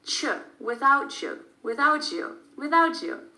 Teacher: When you move your tongue from the T sound to the Y sound in your mouth, it makes a new sound.